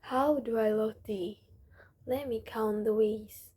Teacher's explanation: Notice how the voice falls in the places that express calmness and rises in the place with passion.